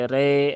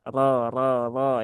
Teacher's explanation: Ro yang berbaris fathah maka dia juga rnya tebal